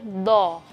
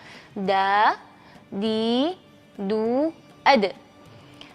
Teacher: huruf Dal itu dia e memiliki sifat istifal sifat itu berarti lidah kita datar